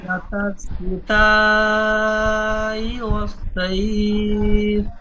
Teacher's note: এখানে তাটি আরো বেশি টান হবে 3 আলিফ টান হবে 2 থেকে 3 আলিফ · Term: মধ্যে মুত্তাসিল